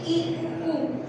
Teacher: जिसमें मुख द्वार लगभग बंद रहता है, मतलब न के बराबर खुला रहता है। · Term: मुख द्वार समवृत्त